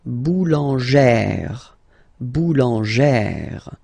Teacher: Remember, when you've got this E plus this accent grave, you pronounce it like E, really open E sound.